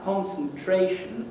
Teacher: there are two stresses in the rhythmic sense. The second one has the big accent on it, the first one has the smaller accent on it, and that's why it seems to be secondary or subsidiary. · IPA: /ˌkɒnsnˈtreɪʃn/